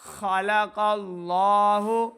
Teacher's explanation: خلق اللہ خا اور کاف کو موٹا کر کے پڑھیں۔